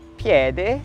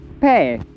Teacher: o desaparecimento das plosivas sonoras nas ocidentais